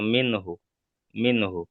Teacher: নুন সাকিনকে বিনা গণ্যায় জাহির করে পড়তে হবে, একে ইজহার বলা হয়।